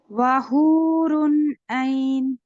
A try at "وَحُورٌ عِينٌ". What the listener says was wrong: اقرا یہ عین کیسے ہے؟ عین ہے، ٹھیک ہے، پہلے بھی آپ نے زبر دیا.